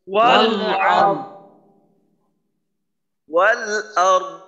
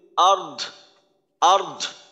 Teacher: এখানে দদে কিন্তু আওয়াজ করতে গিয়ে আবার বাতাস বের করে ফেলানো যাবে না। মনে করেন যদি আমি এইভাবে বলি আর্ধ, আর্ধ, তাহলে কিন্তু আমার বাতাস বের হয়ে গেল। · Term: দদের উচ্চারণ